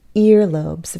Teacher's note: in these um compound nouns made up of two elements the stress is on the first